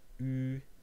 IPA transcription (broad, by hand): yː